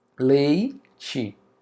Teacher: a vogal vem primeiro, que é a mais alta, depois vem a semivogal, que é a mais baixa. Observa aí o som abaixando, decrescendo. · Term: ditongo decrescente